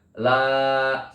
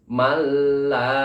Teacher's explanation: lamnya berharokat fathah bertemu dengan alif, maka dibacanya panjang. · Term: mad asli